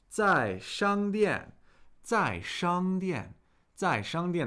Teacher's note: that's fourth tone first tone fourth tone